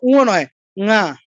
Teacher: sound একটু হালকা করে আমি নাক দিয়ে বের করবো, তখন এটা নাসিক্য হয়ে যায়